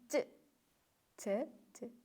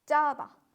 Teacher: Ya'ni ch va j ni o'rtasida bo'lishi kerak. Ch emas yoki bo'lmasam j emas. O'rtasida talaffuz qilasiz, ya'ni ch.